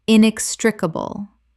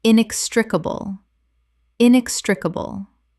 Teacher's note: Five syllables with the stress on the second